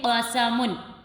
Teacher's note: ایسے ہی قاف زبر قا، سین زبر سا، قسا، میم دو پیش من، قسمن۔ قاف واضح ہو کہ یہ آپ پورا قاف پڑھ رہے ہیں، باریک نہیں بلکہ اس کو موٹا کر کے پڑھیں گے